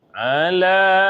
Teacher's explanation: panjang Bu, dia 2,5 alif